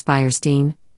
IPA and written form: ˈfaɪərˌstiːn (Fierstein)